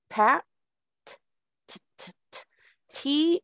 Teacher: you aspirate the sound there is a lot of air that comes out that is what aspirated means it's a heavy full of air